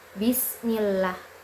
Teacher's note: Nah, tarkik ini berarti membaca huruf dengan suara tipis, ringan, dan lembut. Saat membacanya, posisi lidah rendah dan rileks sehingga suara terdengar lebih ringan. Contohnya pada lafaz Bismillah.